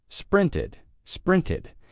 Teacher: It is ed. You could think of it like a short I sound plus a D, or the schwa sound plus D